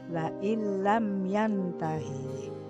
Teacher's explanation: nun matinya tidak dibaca jelas karena lebur menjadi huruf lam, aslinya la in lam yantahi menjadi la ilam yantahi. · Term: idgham bila gunah